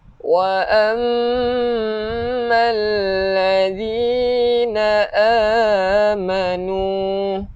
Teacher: mim yang bersabdu kita kena dengung dua harokat. Dua harokat ni wajibal gunnah.